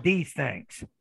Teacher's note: the student takes the interdental consonant and turns it into an alveolar consonant and then it sounds more like a z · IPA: [ð]